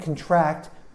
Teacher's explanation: contract you emphasize the second syllable and it means to get something